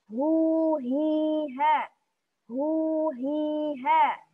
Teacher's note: Kalau ha dia sedikit lebih bawah, makhrajnya sama seperti hamzah.